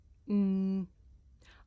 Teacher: It's pronounced m. I make this sound by closing my lips and letting the sound come through my nose. Mm. I can even feel my nose vibrating. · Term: nasal